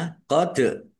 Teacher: bacaan qalqalah dibaca memantul ditampakkan pantulannya